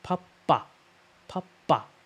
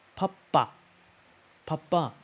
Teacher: you can tell the second ba it's plosive, right? It's stronger.